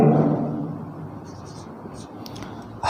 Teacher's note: सघोष है तथा महाप्राण है और कंठ ध्वनि है